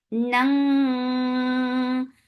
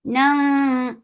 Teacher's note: This is heavy ikhfa, so keep your tongues lifted to make this heavy ikhfa.